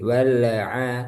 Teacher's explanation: Yang pertama di lam sukun, ini hukumnya al-qamariyah, lamnya jelas. Wal a, lamnya tidak boleh mantul.